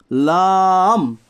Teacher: لام کا جو مخرج ہے وہ ہے زبان کا کنارہ ایک ضاحک سے لے کر دوسرے ضاحک کے مسوڑوں سے ادا ہوتا ہے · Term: لام کا مخرج